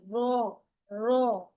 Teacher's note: ऊपर के सामने वाले चार दांतों के मसूड़ों से जब लगता है तो र अदा होता है।